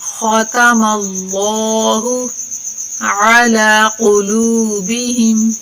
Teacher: لفظ اللہ کا قاعدہ ہے کہ اس سے پہلے والے حرف کے اوپر زبر یا پیش آ جائے تو لفظ اللہ کو موٹا کر کے پڑھتے ہیں، اگر زیر آ جائے تو باریک پڑھتے ہیں. تو ادھر میم کے اوپر زبر ہے تو لفظ اللہ کو موٹا کر کے پڑھیں گے